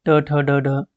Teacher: मूर्धा में आते हैं टवर्ग वाले, टवर्ग, ट ठ ड ढ।